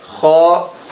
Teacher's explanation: خا کو ہم حلق کے اوپر والے حصے سے ادا کریں گے